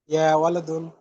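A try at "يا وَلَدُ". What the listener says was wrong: ওয়ালাদুন দুই পেশ না ভাই, এক পেশ। ইয়ার পরবর্তী যাকে আমরা ডাকবো এক পেশ। যদি এক পেশ থাকে এক পেশ ভালো, আর না থাকলে দুই পেশ থাকলে এক পেশ।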